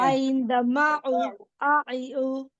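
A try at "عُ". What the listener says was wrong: হ্যাঁ, একটু নরম করে বলবে, এত ভিতরে নেওয়ার দরকার নেই। এটা হচ্ছে হলকের মধ্যখান থেকে উচ্চারণ, মধ্যখান থেকে উচ্চারণ হবে।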